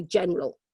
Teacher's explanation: in terms of pronunciation we would tend to say general and we'd miss out that middle syllable that middle vowel